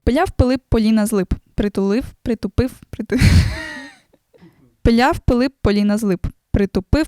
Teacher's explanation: звуки які мають характерне вибухове звучання а саме звуки б і п можуть стати проблемою пиляв Пилип поліна з лип притулив притупив пиляв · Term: експлозивні приголосні